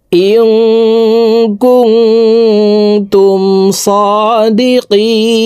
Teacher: এখানে 3 আলিফ টেনে নুনকে সাকিন করতে হবে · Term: মদ্দা আরজি